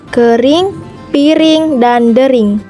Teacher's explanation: vokal I, tinggi bawah depan tak bundar